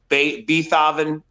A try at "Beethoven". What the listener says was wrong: Beethoven. Beethoven. You're using the wrong syllables. The wrong emphasis on the wrong syllables.